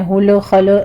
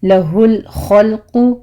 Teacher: لام جہاں جہاں ساکن آ رہے ہیں آپ نے جھٹکا نہیں دینا، اس کو سٹاپ کرنا ہے